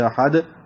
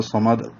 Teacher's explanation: میم کو دال سے ملائیں گے اور دال ساکن ہو جائے گی، قلقلہ ہو جائے گا. جیسے احد قلقلہ، اسی طرح صمد قلقلہ.